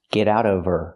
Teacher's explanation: Now we need the Vv sound in of because we don't pronounce the H in her. We link the sounds.